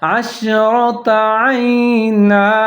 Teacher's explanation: را کے اوپر زبر ہے، اس کو بھی موٹا کر کے پڑھنا ہے